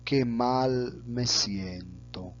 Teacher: podemos observar la bajada al final de la oración